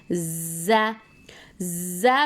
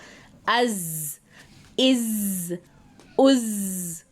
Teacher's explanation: ज़बान की नोक और दांत, दोनों दांतों की अंदरूनी किनारे से, यानी टिप ऑफ द टंग को हम जो हमारे सामने के जो दांत हैं उनका अंदरूनी जो हिस्सा है किनारा उसको टच करेंगे और ज़ की अदायगी होगी।